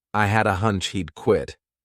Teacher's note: So I combine had a together as one word.